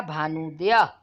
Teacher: ह्रस्व उ मिलकर बन गए दीर्घ उ